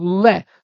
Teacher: इसे जो आप बोलते हैं दंत जमा ओष्ठ, इसको बोलेंगे दंत ओष्ठ, अर्थात ये दांतों से और होठों से दोनों से बोला जाता है।